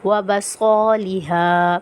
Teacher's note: الف مدہ کو ہم ایک الف کی مقدار کھینچ کر پڑھیں گے